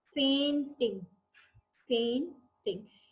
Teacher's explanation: a stressed syllable followed by an unstressed syllable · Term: ट्रॉची